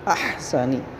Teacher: ہا ساکن ہے، اس کو درمیان حلق سے ادا کریں